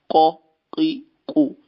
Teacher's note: زبان کی جڑ سے، یہ تالو کے اوپر سے نکلے گا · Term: قاف